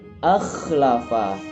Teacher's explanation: makhraj yang kedua yaitu ujung tenggorokan